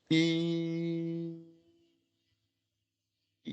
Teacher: 발음할 때 한 번의 입 모양과 혀의 위치로 계속 발음하는 거예요. 입 모양이 바뀌지 않아요. 이, 이 모양 그대로 가는 게 단모음이에요.